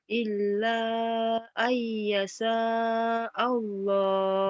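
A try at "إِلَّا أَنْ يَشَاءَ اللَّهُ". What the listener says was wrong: bagus, tinggal shinnya aja digedein. Illa ayyasha shin. Illa ayyasha Allah. Shinnya ayo gedein, ayo.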